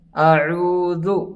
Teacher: اعوذ، حمزہ اور عین میں فرق کیا جاتا ہے۔ عین کو حلق کے درمیانی حصے سے ادا کیا جاتا ہے